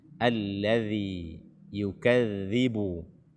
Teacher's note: makhraj daripada huruf dzal ini adalah ujung lidah bersentuhan dengan ujung gigi seri atas kita.